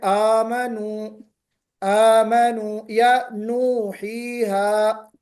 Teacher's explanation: قصر یعنی دو حرکت کے برابر، جس کو ہم تھوڑا سا کھینچنا کہتے ہیں